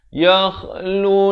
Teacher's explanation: Kha di hujung kerongkong